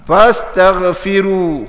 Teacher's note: Fa ni jangan ambil pa ya. Itu kasar. Fa biar keluar angin. Dihamas. Dipanggil hanamas.